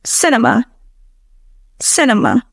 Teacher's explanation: There are two schwas in this word. First in the E and then in the A.